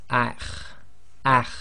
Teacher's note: The next one is the letter kha, and it's one of the tafkhim letters, and you've got that slight grinding in the throat. So this will be pronounced as akh, akh.